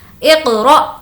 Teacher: اقرأ، یہاں پر پھر سے ہمیں جھٹکا دینا ہے کیونکہ حمزہ ساکنہ کے پڑھنے میں جھٹکا ہوتا ہے